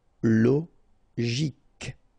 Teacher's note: Psychologique, okay, remember it's an exception here because you've got this C-H-O. Normally we should pronounce it sho, okay, but in that case we pronounce it ko. Psychologique, remember, final Q-U-E like that, K.